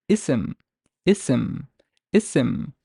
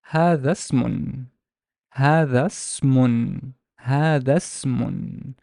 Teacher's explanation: the initial glottal stop and the vowel I are not pronounced. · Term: wasl